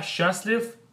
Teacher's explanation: So the way we say this word is we combine these two letters, these two sounds, into one sound, which is going to be sh, sh, and then we do not pronounce the letter t, so letter t is silent.